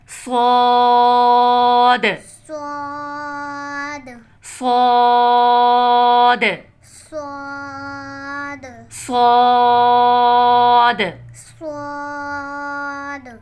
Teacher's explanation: जुबान की नोक से ऊपर नीचे के अगले दोनों दांतों को आपस में मिलाकर अदा होता है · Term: स्वाद